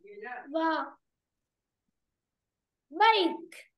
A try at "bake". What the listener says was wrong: Bật âm cờ mạnh lên nữa. Bake.